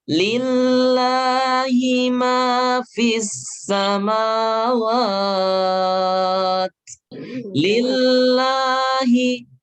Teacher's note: Jadi jangan dibaca tebal ketika sebelum lafadz Allah itu kasroh. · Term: tipis